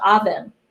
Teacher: Oven, oven, halos wala siyang stress. Yung schwa, yung unstressed na sound siya